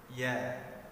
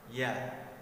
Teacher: Makharijul huruf Ya yaitu tengah lidah kita bertemu dengan langit-langit bagian atas